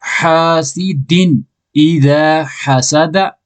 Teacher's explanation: دو زیر تنوین نون کی آواز ظاہر کر کے پڑھیں گا. دال دو زیر دن کیوں پڑھیں گا ظاہر کر کے کیونکہ بعد میں حمزہ حروف ہلکی کا 6 حروفوں بچوں حمزہ آئے ہیں.